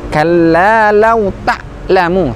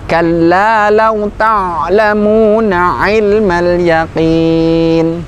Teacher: Huruf ain ketika sukun sebagaimana ayat-ayat sebelumnya, tidak serta-merta berhenti. Kalla law ta'lamu, kurang tepat, majukan sedikit.